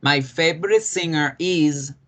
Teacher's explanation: la palabra is no la pronunciamos con S, ¿cierto? La pronunciamos con Z